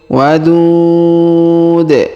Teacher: Huruf du kita panjangkan, boleh 2 harokat, boleh 4 harokat, boleh 6 harokat karena di depan huruf du terdapat waw sukun sebelum huruf pemberhentian, dan huruf pemberhentian di sini huruf du kita sukunkan atau kita matikan.